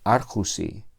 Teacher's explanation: Y nos quedamos con arjo, esa vocal omicron se alarga al diptongo u, y así explicamos esta forma del dativo plural